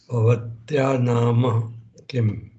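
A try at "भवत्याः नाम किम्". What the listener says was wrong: Bhavatyaha nama kim. Bhavatyaha. Visarga is there. Pronounce the Visarga properly.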